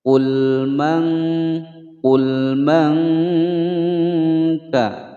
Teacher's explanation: nun sukun bertemu dengan huruf kaf, disamarkan dan didengungkan selama 2 ketukan. Hukum bacaan ikhfa.